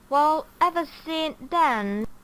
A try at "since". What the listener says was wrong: Since, it's not sin, it's since.